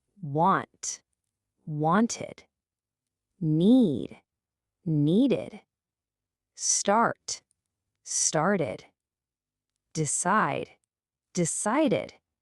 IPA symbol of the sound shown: ɪd